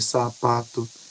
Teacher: Qualquer um desses sons produzidos aqui isoladamente vai nos mostrar um ruído contínuo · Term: fricativas